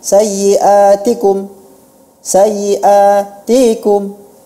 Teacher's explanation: harakat yang berlebih dia harusnya dibaca satu ketukan